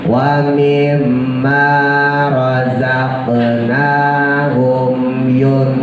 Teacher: Jadi hum setelah sempurna mimnya langsung dimasukin ke yun.